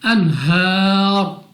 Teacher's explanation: ہا پر کھڑا زبر ہے، تو ہا کو کھینچ کر پڑھیں گے، اور را کو کر دیں گے ساکن وقف میں، لیکن را کو پڑھیں گے موٹا · حروف مدہ کو یاد رہے کہ 2 سیکنڈ تک لمبا کر کے پڑھا جاتا ہے۔ را پر ہے پیش، تو اس پیش کی صورت میں را کو پڑھیں گے پر، یعنی منہ اور آواز کو کھول کر موٹا کر کے